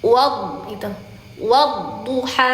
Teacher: walaupun dia boleh mencucu, berharokat dhamma boleh mencucu, tetap pangkal lidahnya diangkat. Wad itu, wadduha, seperti itu, wadduha. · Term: huruf dha